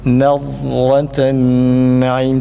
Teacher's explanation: Dad harfini kalkale yapmayalım. Nad değil, kalkale değil.